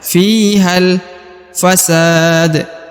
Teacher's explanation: kemudian huruf ha karena dia bertemu dengan huruf lam berharakat sukun maka huruf ha tidak dibaca Dua harakat lagi tapi langsung masuk ke huruf lam · Alif yang di sini tidak dibaca ya atau tidak dianggap ya karena sebagai penyambung antara kedua kata